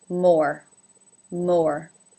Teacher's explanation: it has the Oh as in no diphthong